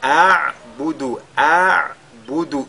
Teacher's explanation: nous avons d'abord le hamza avant le ayn